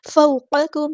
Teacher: ये जो काफ़ है दूसरे वाला ये बारीक पढ़ेंगे